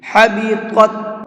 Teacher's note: پہلے طا ہے، اس کو منہ بھر کے پڑھیں گے، پھر تا ہے، اس کو باریک کر کے پڑھیں گے۔